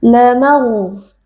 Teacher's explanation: Ra sukun yang sebelumnya berharakat fathah dibaca dengan tafkhim atau dengan tebal, yaitu dengan mengangkat pangkal lidah.